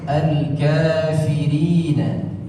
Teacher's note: ucapan huruf fa harus digesekkan di situ suaranya dan nafas yang dialirkan, dan ada ancang-ancangnya.